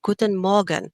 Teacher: If you want to sound more German for this one, try to make the letter R a little bit more silent and say Guten Morgen. Okay, do you hear how the R kind of becomes silent?